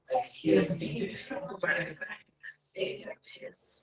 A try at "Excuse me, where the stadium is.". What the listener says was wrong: Stadium is. You link stadium is together. Stadium is. So, stadium is.